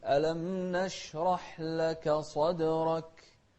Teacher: الكاف هنا من أحرف الهمس، خاصة إذا كانت ساكنة تكون أكثر همسا